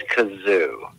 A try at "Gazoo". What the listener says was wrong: I'm going to give it to you and pretend you did a hard G with what you said. It was the Great Gazoo. Great Gazoo. Yes, very close to Kazoo, though. I almost couldn't even tell the difference what you said.